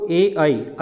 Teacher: इसका आंसर हो जाएगा कंठ और तालु, ठीक है। जो आई है दोस्तों वो कंठ और तालु के उच्चारण स्थान में आप लोगों को देखने को मिलता है